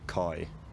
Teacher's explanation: having a fairly fronted but still rounded off glide